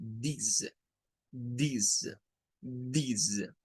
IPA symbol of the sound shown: ð